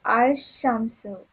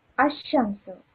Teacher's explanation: When Al is prefixed to a noun beginning with a solar letter, the Lam of Al. Lam of Al is assimilated to the solar letter.